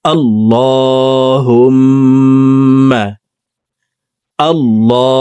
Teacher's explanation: হরকতের বামে নুনে মিমে তাসদিদ হইলে সর্ব অবস্থায় নাকের বাসি থেকে গুন্নাহ করিয়া পড়িতে হয়। 3 সেকেন্ড পরিমাণ গুন্নাহ করে পড়ব। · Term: ওয়াজিব গুন্নাহ